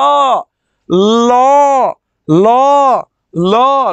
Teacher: জিহ্বার দুই পাশ দিয়ে বায়ু বের হয়, এই জন্য তাকে পার্শ্বিক ধ্বনি বলা হয়।